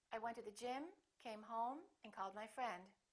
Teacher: rising intonation when you're not finished speaking and you have something more to say and then falling intonation at the end of your sentence